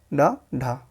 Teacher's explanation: जिस व्यंजन वर्ण के उच्चारण में जीभ मूर्धा से स्पर्श झटके के साथ नीचे आती है उसे उत्क्षिप्त या द्विगुण या फेंका हुआ व्यंजन कहते हैं